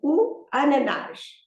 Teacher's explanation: There is an accent on the last syllable, so the emphasis is on that syllable